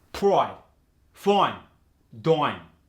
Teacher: Now the long I gets changed to an oi. It's not as intense as the Cockney, which is another accent I'll go over. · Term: oi sound